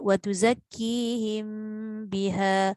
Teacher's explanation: Ikhfa syafawi apabila mim sakinah bertemu dengan ba, maka wajib dibaca dengan dengung dengan kadar 2 harakat. · Kedua-dua tu huruf bibir. Sembunyikan bunyi mim itu apabila dia nak bertemu dengan huruf ba.